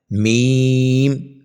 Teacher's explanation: میم دونوں ہونٹوں کے خشک حصے سے ادا ہوتا ہے